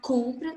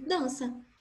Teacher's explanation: Na palavra compra, conta, como tem essa nasalização, o som da palavra, ele não passa apenas pela boca, ele passa pelo nariz também. Então, esse som, ao passar pelo nariz, ele fica sem ruído, ele não sai.